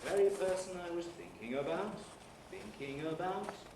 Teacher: the nucleus is on the first syllable of thinking and after that the pitch is rising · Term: low rise